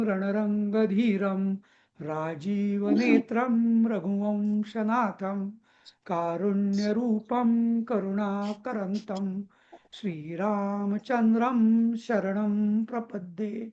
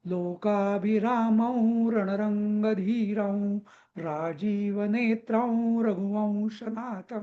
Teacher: इथे सगळ्या अनुस्वाराचा मी म केलेला आहे